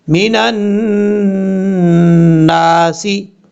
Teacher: نون کے اوپر شد ہے، غنہ کریں گے ایک الف کی مقدار